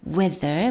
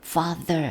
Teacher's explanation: 무성음이 아니라 유성음이죠 father 할 때 바로 그 유성음이고요